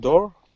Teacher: D is one of the alveolar plosives